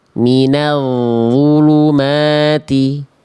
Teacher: Jadi ketika ujung lidah kita sentuhkan dengan ujung gigi seri atas kita dan kita tebalkan huruf dho dengan mengangkat pangkal lidah, maka dialirkan suaranya